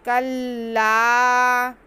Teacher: काफ को लाम के साथ मिलाएंगे, शद है थोड़ा रुक के मिलाएंगे, और आगे अलिफ मद्दा है खींचेंगे।